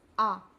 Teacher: आ को जब हम बोलते हैं तो हमारा मुख पूरा खुल जाता है। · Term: विवृत